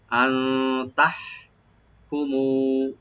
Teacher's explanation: হাটাকে একটু হামস করব গলার মাঝখান থেকে। আন তাহ কুমু, কুমু মু একালে টানবেন।